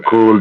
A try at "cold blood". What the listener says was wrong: It's cold blood. It's cold blood, not cool blood. Cold blood. Cold.